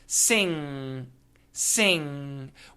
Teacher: When you make the NG sound, all the contact, all the touching happens in the back of the mouth. The tip of the tongue does not need to touch anything.